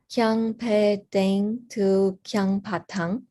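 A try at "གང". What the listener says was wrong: No, it's Kang, not Kyang.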